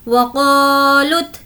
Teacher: अब हमें यहाँ पर लाम को ता से मिलाना है। लाम ता पेश लुत, वक़ालुत, क्योंकि यहाँ पर वाव पर कोई हरकत नहीं है इसलिए हम वाव और ये अलिफ को छोड़ देंगे।